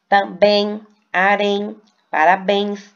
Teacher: Veja que a última sílaba é a sílaba mais forte e foram acentuadas porque terminou em e ens.